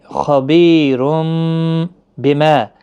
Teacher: تنوین کی آواز میم میں بدل جائے گی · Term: قلب